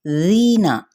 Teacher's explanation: ری پہ مد اصلی بالیا کا قاعدہ ہو رہا ہے، جس کو ایک الف یا 2 حرکات کے برابر لمبا کریں گے